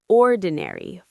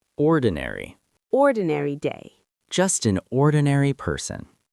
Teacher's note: 4 syllables, stress on the first. Ordinary. Let's practice.